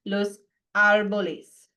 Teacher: But árbol is special, right? Accent is on the first syllable. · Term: stress